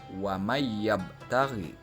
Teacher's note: huruf nun dileburkan ke dalam huruf ya